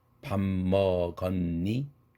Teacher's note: 실제 그 글자대로 발음된 것은 니자 하나밖에 없어요. 밥도 밤으로 변했죠.